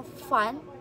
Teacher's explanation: ito po yung may maingay na katinig na kung saan ay dumadaan po ito sa makitid na puwang po sa ating bibig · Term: fricative